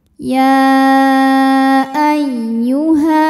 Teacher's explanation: hukumnya adalah Mad Thobi'i zohiri sebab ada Alif didahului harakat fathah maka huruf ha kita panjangkan dua harakat saja ketika berhenti